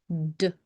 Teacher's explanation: It's not duh, d. Just stop after saying the sound d.